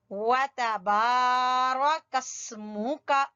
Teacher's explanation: با کو لمبا کریں گے الف مدہ کی وجہ سے